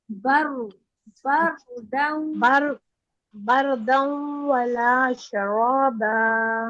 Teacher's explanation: रॉ के ऊपर थोड़ा सा तवस्सुत रहेगा, यानी आवाज थोड़ी सी इसकी चलेगी